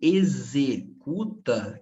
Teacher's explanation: O X em executa, que tem som de Z